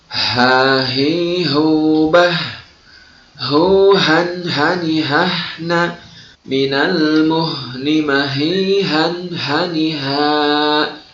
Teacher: murnikan keluar hurufnya dari pangkal tenggorokan jangan sampai huruf tersebut masuk ke rongga hidung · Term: huruf H